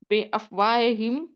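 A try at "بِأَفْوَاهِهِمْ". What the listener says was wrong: یہ افواہ نہیں ہے، یہ ہاں ہے نا، یہ حلق سے نکالیں گے.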